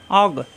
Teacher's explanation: কণ্ঠনালীর শেষ অংশে গণের উচ্চারণ